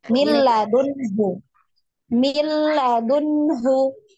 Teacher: Dimasukkan langsung ke huruf lam ya, tanpa didengung.